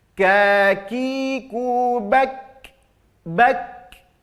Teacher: Kakiku bak, nampakkan kaf, ya, nampakkan hames dari huruf kaf